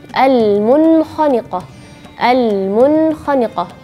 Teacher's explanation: Terus kalau huruf nun sukun ketemu atau tanwin ketemu huruf kha, yaitu juga huruf yang terakhir di bagian paling atas bagian tenggorokan, juga ilhar bacanya kalau di dalam satu kata al-munkhaniqah, al-munkhaniqah.